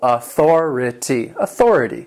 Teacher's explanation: And authority has 4 syllables, and the stress is on that second syllable.